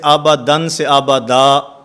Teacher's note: 2 زبر والی تنوین وقف کی حالت میں الف سے بدل جاتی ہے